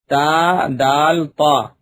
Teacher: زبان کی نوک اور اوپر کے دانتوں کی جڑ سے ادا ہوتے ہیں